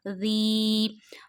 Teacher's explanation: First of all, zal we read very softly. We have to touch while reading zal our top of the tip of the tongue to the inner edges of top two front teeth and read it very softly.